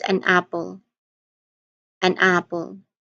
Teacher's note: So the n sound there is transferred to the second word. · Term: linking